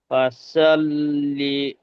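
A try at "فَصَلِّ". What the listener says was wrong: ফাসা হয়ে যাচ্ছে, ফাসা নয়, ফাসল।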